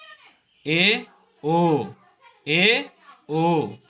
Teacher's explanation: ए और ओ को बोलते हैं जब हम, तो हमारा मुंह आधा खुलता है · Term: अर्धसमृत स्वर